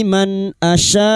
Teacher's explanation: nun sukun dibaca jelas tanpa mendengung idhar halki